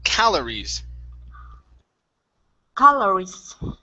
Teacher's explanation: And your last word is calories. So your stress in this word is at the very beginning